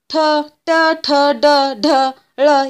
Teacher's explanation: कारण बघा आता ठ ठ ड ढ ळ यांचा उच्चार करताना आपल्या टाळूच्या तिथे मूर्धन्यला स्पर्श करत असते जीभ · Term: मूर्धन्य व्यंजन